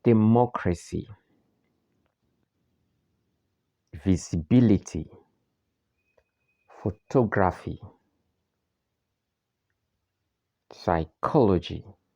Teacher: These words have the main stress on the antepenultimate syllable. That is the third syllable from the last syllable. So we are going to start counting from the last syllable.